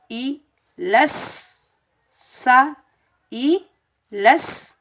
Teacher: जब हम सा को अदा करेंगे तो सीटी की आवाज़ नहीं आनी चाहिए, जब हम सीन को अदा करेंगे तो सीन पर सीटी की आवाज़ आएगी